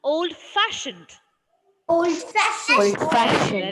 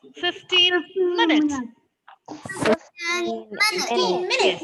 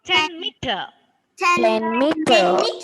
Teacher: Stress is given to the first syllable of the second word.